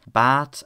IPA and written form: bæt (bat)